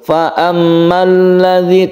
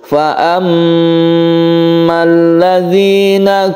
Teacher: Gunnah musyaddada karena mim ini bertasydid, maka kita gunakan atau kita panjangkan. Kita tahan ketika membaca fa'amma. Jadi tidak boleh langsung fa'ammal ladzi, tapi kita tahan dulu.